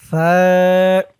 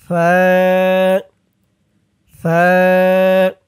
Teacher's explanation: জিহ্বার মাথা উপরের দাঁতের মাথার সাথে লাগান।